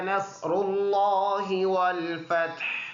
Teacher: صاد بھی موٹا ہے، اور را بھی پر ادا کریں گے۔ را کے اوپر زبر یا پیش ہو تو پر ہو پڑھیں گے۔